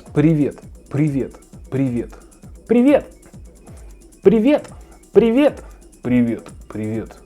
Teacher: Stress on the second vowel.